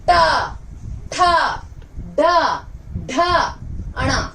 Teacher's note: मुड़ने के कारण इसे हम कहते हैं मूर्धा। ये सभी ध्वनि जो होती है इन्हें हम मूर्धा ध्वनि कहते हैं क्योंकि इसमें हमारी जो जिह्वा होती है वह मुड़ती है।